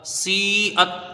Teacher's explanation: سین کو یا سے ملا کے پڑھیں گے، یا مدہ ہے، یہاں پر کھینچ کے پڑھی جائے گی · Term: مد متصل